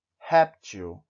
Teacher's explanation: Por exemplo, a palavra réptil, você inclusive tem um acento na primeira sílaba que diz que aí deve ser pronunciada mais forte. Réptil.